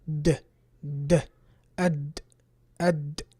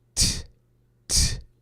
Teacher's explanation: Dal is voiced, ta is not.